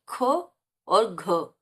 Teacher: महाप्राण है ये क्योंकि इसमें श्वास वायु ज्यादा निकल रही है उच्चारण में